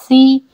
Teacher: देखिए सीन को पढ़ते हुए सीटी की आवाज़ आएगी